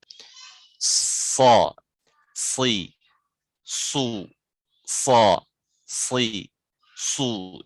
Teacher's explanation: Nah, jadi desisnya itu sama dengan sin ya. Cuma ketika dikeluarkan dia tebal.